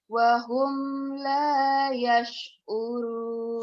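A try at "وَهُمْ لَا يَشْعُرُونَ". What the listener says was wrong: Humnya, M-nya jangan bersisa ya. Karena idhar. Wahum, wahum, wahum la yash'urun. Dilakukan jadi gini. Wahum, wahum la. Tekan di la. Wahum la yash'urun.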